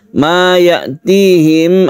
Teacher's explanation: ada mim bertemu dengan mim, kita sebut dengan idgham mimi. Ini dipanjangkan atau didengungkan, ditandai dengan tasydid mim yang berarti gunnah.